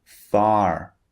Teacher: far f a r is pronounced a far in British English in American English the r at the end of the word is pronounced far can you hear that this is the American pronunciation far